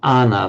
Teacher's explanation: So a plus ana by sandhi just becomes ana. So the a and the a merge into a single a. So ana means in-breathing.